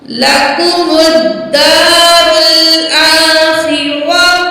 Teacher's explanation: रा को मोटा पढ़ा जाएगा क्योंकि रा के ऊपर ज़बर है